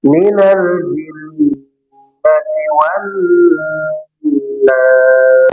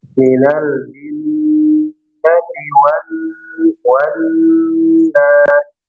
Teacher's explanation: minal jin itu nunnya bertasdid ya. Ditahan gunnah panjang.